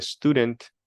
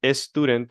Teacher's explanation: Tendemos a decir student, le agregamos una vocal al inicio